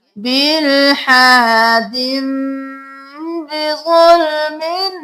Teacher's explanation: अब देख लीजिए जिस तरह से छोटा नून पढ़ा जाएगा इसी तरह से ये मीम भी पढ़ा जाएगा, बिलहादिम, यहाँ पर हम दिन नहीं करेंगे, दाल को मीम के साथ मिलाएंगे,